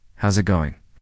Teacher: Instead, how is it going becomes how's it going. The is disappears, and the final G in going often softens. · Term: connected speech